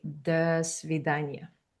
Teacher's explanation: we reduce most of the vowels and we make them sound similar to this schwa sound